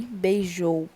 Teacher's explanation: a gente tem a última sílaba tônica em beijou, porque o jou é mais forte